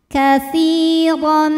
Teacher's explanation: Katsiran. Huruf ra dibaca secara tafkhim karena ra berharokat fathah tanwin, maka ra dibaca dengan tebal.